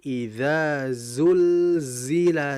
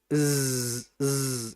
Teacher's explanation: Karena za itu sifatnya saofir. Saofir itu suara yang kuat dibandingkan Hames. Suara desisan yang kuat ya.